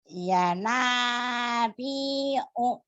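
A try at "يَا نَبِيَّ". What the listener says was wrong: Ya Nabi. Bukan bi'u ya.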